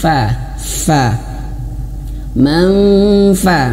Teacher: huruf Fa itu makhrajnya bibir bawah menyentuh ujung gigi seri atas fa fa manfa maka Bibir bawahnya Ya sudah menyentuh ke gigi